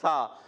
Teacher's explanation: زبان کا سرا جب اوپر والے دانتوں کے کنارے سے لگتا ہے تو ادا ہوتا ہے سا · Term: حروف لثویہ